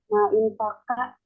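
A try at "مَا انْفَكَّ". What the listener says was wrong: Manfakka. Jadi jangan dibaca hamzah wasalnya. Ya, manfakka.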